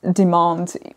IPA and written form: dɪmɑːnd (demand)